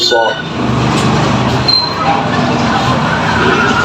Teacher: سین زبر سا، صاد زبر صا، صاد کو منہ بھر کے پڑھیں گے